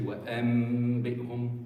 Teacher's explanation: converted the noon completely into a meme using your lips. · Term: iqlab